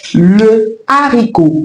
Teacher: On ne dit pas l'haricot, on dit le haricot parce que la consonne H devant ce mot est aspirée. Donc elle est bien présente dans la prononciation de ce mot.